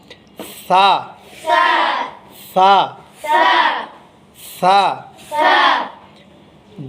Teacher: জিহ্বার আগা সামনের উপরের এই দুই দাঁতের আগার সঙ্গে লাগবে, বাতাস জারি থাকবে, পাতলা হবে।